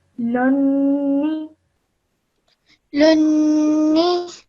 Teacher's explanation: when the noon has a shadda on it, Then you hold that nasal sound in your nose for 2 seconds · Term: gunna